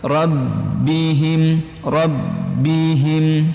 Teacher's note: ketika ada ba bertasdid teman-teman, cara penekanannya jangan sampai dilepaskan tapi dia mengalir.